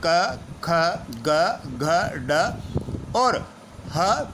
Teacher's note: इनके उच्चारण में हमारी जीवा कंठ को स्पर्श करती है, ऐसा महसूस होता है। जब हम इन वर्णों का उच्चारण करते हैं तो जीवा कंठ को स्पर्श करती सी महसूस होती है, इसलिए इनको कंठय कहा जाता है।